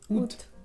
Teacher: la A al principio es muda